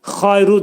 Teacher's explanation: Xayru dedikdə bura xa hərfi boğazın yuxarısından çıxarılacaq. Bunun məxrəci yə hərfi incə hərfdir.